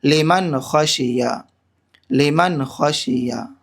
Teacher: لام زیر لی، میم نون زبر من، لمن، نون ساکن کے بعد خا حروف حلقی میں سے آ رہا ہے، یہاں پر بغیر گنہ کے جلد پڑھیں گے۔ لمن، خا زبر خا، شین زیر شی، خشی یا زبر یا، خشیہ، لمن خشیہ، لمن خشیہ۔